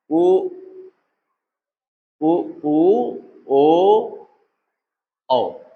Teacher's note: बाकी ये जो पिछला वाला भाग है ये इसमें अगर हम देखेंगे तो इसमें कौन सा हरकत में पिछला जो है जीभ जब प्रभावी स्थिति में आती है तो वो इन्हीं के उच्चारण में आती है। यहां पर आपके जो वृत्त मुखी है जितने भी उ ओ औ यह सब पश्च में चले गए